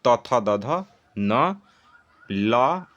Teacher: त थ द ध न ल और श इनका उच्चारण स्थान क्या होगा? इनका उच्चारण स्थान होगा दंत।